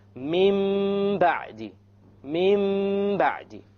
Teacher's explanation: We change the Tanween into a Meme, and that is called iqlab.